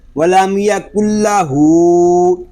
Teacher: لام کو نہیں کھینچیں گے بلکہ ہا کو کھینچ کر پڑھیں گے. ولم یکل ہو، اس کو ولم یکل ہو بھی نہیں پڑھیں گے، لام پہ اپنی آواز کو ہم جاری نہیں رکھیں گے، اس طرح پڑھیں گے وَلَمْ يَكُنْ لَهُ.